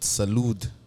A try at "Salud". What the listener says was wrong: Salud, you don't say the D. The D is silent. so it's just Salud. Salud.